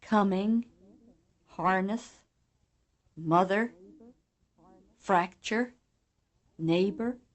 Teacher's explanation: words with accent one have the stress on the first syllable